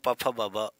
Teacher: प फ बोलोगे तो ओठ का जो है प्रयोग होगा ओठों के यहां से हवा देखो फस के निकलेगी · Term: ओस्ट